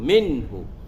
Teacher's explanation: Nun mati bertemu dengan ha izhar haqiqi, jadi kita zahirkanlah nun mati itu.